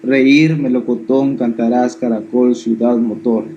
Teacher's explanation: acento en la última sílaba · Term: agudas